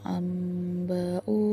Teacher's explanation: bunyi nun mati atau tanwin ini akan diganti menjadi mim lalu bacaannya didengungkan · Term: iklab